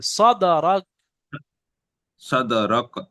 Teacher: আলাম নাশরাহ লাকা সাদরাক দালটা ওয়া ওয়া কলকলা, দা কফ ত বা জিম দাল, সেই হরফে কলকলার মধ্যে দাল এসছে, দালের উপর সাকিন হয়েছে, তাহলে দালটা আগের অক্ষরের সাথে মিলিয়ে মাখরাজে ধাক্কা মেরে কলকলা করে পড়তে হবে